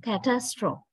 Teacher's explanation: This a sound, the syllable, the second syllable is quite strong